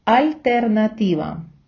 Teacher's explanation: приголосні в іспанській не пом'якшується від наступної голосної наприклад те в словах альтернатива і амністия читаємо твердо